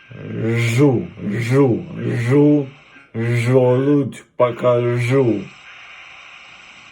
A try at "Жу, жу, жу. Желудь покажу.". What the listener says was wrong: Здесь слегка смягчилось. На жу почему-то у тебя смягчается. Жу.